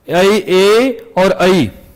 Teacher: ए और ऐ इनका उच्चारण स्थान होता है कंठ और तालु दोनों कंठ और तालु इसका उच्चारण स्थान दोनों है।